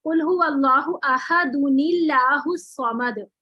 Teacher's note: अच्छा जब मैं अहदुनिल्लाहु करके पढ़ूंगी तो फिर अल्लाह, अल्लाह की लाम को मैं बारीक पढ़ूंगी